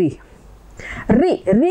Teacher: ऋ बोलते समय आपका जो जीवा है वो ऊपर टकराती है। ऊपर वाले स्थान को कहा जाता है मूर्धा।